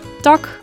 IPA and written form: tɑk (tak)